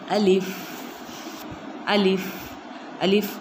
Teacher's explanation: अलिफ अदा होता है मुंह के खाली हिस्से से। मुंह के खाली हिस्से से अलिफ अदा होता है।